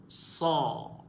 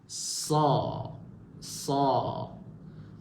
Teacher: Hujung lidah. Huruf sad di bahagian hujung lidah. Okey. Bersentuhan dengan belakang gigi bawah. Okey. Belakang gigi seri bawah.